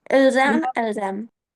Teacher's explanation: You check if you have vowel, then remember the Z, la liaison.